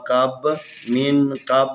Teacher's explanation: یہ با ساکن ہے تو اس کے اوپر قلقلہ کریں گے